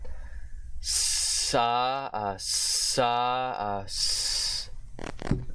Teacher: Now we've hit long S, which is the long voiceless alveolar sibilant fricative consonant.